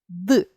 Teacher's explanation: Д приголосний, шумний, дзвінкий, твердий.